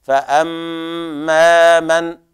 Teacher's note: لابد أن نحافظ على الغنة في الميم، كذلك المد الطبيعي الذي بعدها